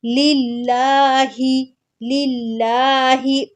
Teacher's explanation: لفظ اللہ کے لام کو باریک پڑھنا ہے